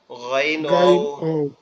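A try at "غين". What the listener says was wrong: গাইন হবে না আওয়াজটা মনে হবে যে গালের গালের ভিতর থেকে আসতেছে, ঠিক আছে, গইনের আওয়াজটা।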